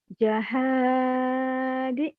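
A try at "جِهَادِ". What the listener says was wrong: Itu kan pasti barisnya di bawah gimana gitu loh. Itu bukan ja.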